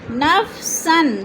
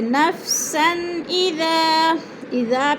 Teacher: نفسن، 2 زبر تنوین حروف حلقی میں سے حمزہ آ گیا تو ادھر اظہار حلقی ہو رہا ہے، غنہ نہیں کریں گے۔